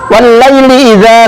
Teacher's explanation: cara membacanya harus dimasukkan atau diidghamkan kepada huruf Syamsiah atau dengan kata lain tulisannya tetap ada tetapi tidak dibaca alif lam nya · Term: Idgham Syamsiah